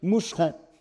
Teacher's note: le mousseron prononcé à la normande, c'est-à-dire moucheron, puisque le S intervocalique est palatalisé. Donc vous prenez un mousseron français, en Normandie c'est un moucheron, avec Guillaume de Conquérant, il devient un mushroom anglais.